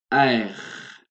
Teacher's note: c'est le R français qui vient de la gorge, un petit peu comme si je prends de l'eau et que je me gargarise. D'ici.